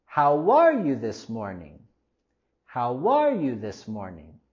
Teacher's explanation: Cuando tenemos este tipo de pregunta, queremos decirlo cayendo la entonación al final de la pregunta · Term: WH question